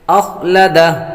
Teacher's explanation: خا حروف مستعلیہ میں سے اس لیے اس کو پر پڑھیں گے